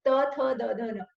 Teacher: इसमें हम दांत यूज कर रहे हैं, हम टंग को दांत पे लगा रहे हैं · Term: दंतव्य